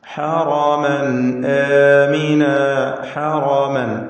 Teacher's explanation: റാഇ തഫ്ഖീം ചെയ്ത് തടിപ്പിക്കുക. ഹറമൻ എന്നതിലെ തൻവീൻ ശേഷം ഹംസ ഇവിടെ ഇൽഹാർ ഹൽഖി നൽകി മണിക്കാതെ തൻവീനിനെ വെളിവാക്കി ഉച്ചരിക്കുക.